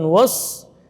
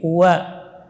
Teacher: Wawnya juga tipis, tidak boleh tebal karena pengaruh shad, bukan was tapi wa.